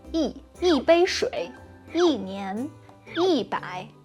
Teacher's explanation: But I think for like 90% of Chinese learners, the tone change of yi always tells us that you are not a native. When you want to say one of something in Chinese, the number yi will change to a fourth tone.